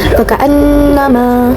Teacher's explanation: Lalu ada guna, faka'annama terdapat guna, yaitu nun bertasydid. Cara bacanya ditahan serta memakai dengung ke hidung